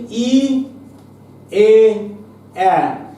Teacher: এবার আসি ই, এ, এ, এই তিনটি উচ্চারণের সময় কি হয়? ওষ্ঠ প্রসারিত হয়ে যায়, তাই এই তিনটাকে আমরা বলছি প্রসারিত স্বর